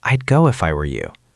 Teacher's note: He thought it was present tense, but the speaker said I'. That tiny soft D was the ghost word for would.